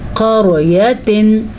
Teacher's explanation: अगर आप मुंह को गोल करके आवाज़ निकालेंगे तो आवाज़ मुंह के अंदर मोटी होके निकलेगी, यानी कि क़रयतिन। अलबत्ता क़ाफ को भी पुर पढ़ना है क्योंकि क़ाफ हमेशा पुर पढ़ा जाता है, ये मोटा क़ाफ है।